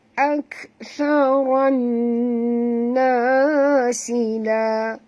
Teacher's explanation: kita kena masukkan bunyi ra ini terus ke dalam nun disertai dengan dengung ya. Dengung kerana di atas nun ada tasydid. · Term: idgham